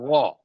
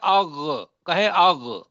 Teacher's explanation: غین غا بھی ہے اور یہ حلق سے بھی نکلے گا، موٹا بھی ہوگا